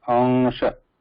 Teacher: There is no amsha. It should not be pronounced with ma in between. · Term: anusvara